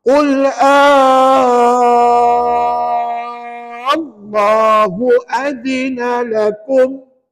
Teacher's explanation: Qul Allahu adina lakum. Pastikan cukup 6 harakat baru tuan-tuan bunyikan lam yang bersabdu.